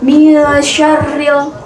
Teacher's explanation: Nah, di situ ada hukum bacaan alif lam qamariyah, yaitu dengan cara bacanya yaitu jelas, tidak memantul